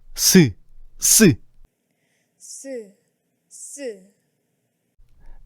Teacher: 이 소리들은 혀끝이 윗잇몸, 치조에 가까이 다가갔을 때 나는 소리야. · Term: 잇몸 소리